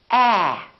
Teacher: your lips are open and your tongue is down and your tongue is tense